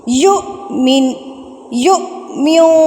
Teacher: فَلْيُؤْمِنْ، اب یہ وہی جھٹکے والا آ گیا ہے، حمزہ کے اوپر جزم ہے، حمزہ کے اوپر سکون کی حالت ہے، تو ہم اس لفظ کو جھٹکا دے کے پڑھیں گے